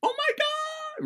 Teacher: to make pitch my voice has to go up my voice goes really high